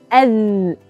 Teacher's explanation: Makhraj huruf zal adalah hujung lidah kerana terputusnya suara ketika mana hujung lidah bersentuhan dengan hujung gigi kapak atas.